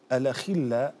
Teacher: أنت فخمت الخاء هنا وهي في أدنى مراتب التفخيم